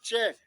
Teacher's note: च होता आपका तालव्य तालू से बोला जाएगा